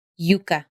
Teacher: the middle of the tongue is right next to the roof of the mouth Yuka or it may even touch the roof of the mouth